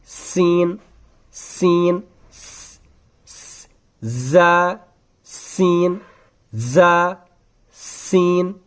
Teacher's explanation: अदा हो जाएगा और सीन की भी यूनिक सिंबल है कि सीन को भी पहले सीटी जैसी निकलती है जैसे ज की निकलती है वैसे ही सीन को भी निकलती है